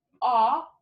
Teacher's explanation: it's ah in loft which is low back